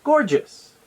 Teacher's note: the first syllable Gore is pronounced with an open o sound like in the word Orange the second syllable is just and it's pronounced with a J